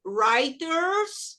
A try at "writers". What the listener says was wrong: Writers. Writers. Writers. Writers. Writers.